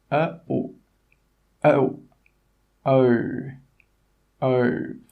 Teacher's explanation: the o sound is a diphthong so that means your tongue must move to make that sound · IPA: əʊ